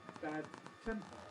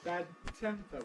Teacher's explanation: We say bad temper. We keep our tongue in place, just like a double T, but it starts voiced, bad, and then becomes voiceless.